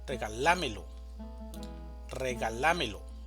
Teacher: Regalámelo es una palabra de 5 sílabas, una sílaba tónica y 4 sílabas átonas. La sílaba tónica va a estar en la.